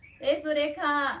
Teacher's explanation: आता कुणाला हाक मारली, सुरेखा, ए सुरेखा असं करतो ना, ते शेवटचा आ कसा म्हटला पण एकदम दीर्घ म्हटला, म्हणजे त्याला प्लुत म्हणायचं